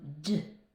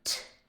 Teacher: So, everything's being formed exactly the same and the only difference is that with the D the vocal cords are vibrating and with the sound for T the vocal cords are off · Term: voiced